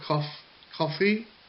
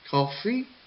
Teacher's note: the second syllable fee goes down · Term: rise and fall